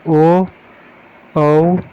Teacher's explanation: Number 8 पाता कंठ ओष्ठीय, जिनका उच्चारण कंठ और ओष्ठ दोनों से हो, जैसे ओ औ, ये जो है दोनों कंठोष्ठीय है।